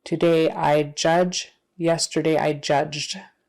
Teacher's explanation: if the verb ends in a voiced sound like J that ed sound is going to be voiced also